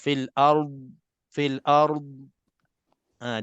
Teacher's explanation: tak boleh kita qalqalahkannya tak boleh kita terlantun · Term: dad yang mati